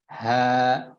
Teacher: huruf h diucapkan ya, dikeluarkan dari pangkal tenggorokan, tidak terlalu kuat sehingga khawatir nanti keluarnya dari dada ya, dari bawahnya.